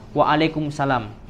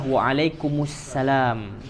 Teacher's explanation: Indonesia ya banyak melakukan kesalahan ketika pengucapan Assalamualaikum atau wa'alaikumussalam ya banyak yang mengucapkan ketika menjawab itu Waalaikumsalam padahal yang benar adalah wa'alaikumussalam itu nyambung ya